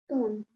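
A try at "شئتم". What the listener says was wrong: Tum. Make sure you push your lips together to make the meme sound, okay? Tum.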